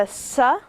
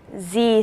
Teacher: Okay, so the S sound is the voiceless version of this, and you know, with that exercise where we put our hand on our throat, you will not feel a movement with the S phoneme, but you will with the Z phoneme. That's because we're using our vocal cords.